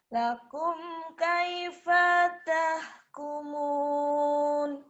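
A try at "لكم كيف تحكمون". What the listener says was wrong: Tapi dipanya pendek. Lakum, lakum lakum, lakum, lakum kaifa tahkumun.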